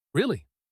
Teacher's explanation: Flat low pitch. This means sarcasm or disappointment.